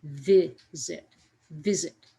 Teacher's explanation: For visit, that stress comes at the beginning of the word